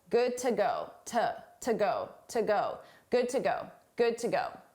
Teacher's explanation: to is a reduced sound, an unstressed sound